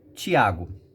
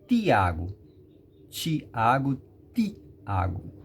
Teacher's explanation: o mineiro fala o fonema quase não encostando a língua nos dentes nós baianos encosta fortemente a ponta da língua nos dentes superiores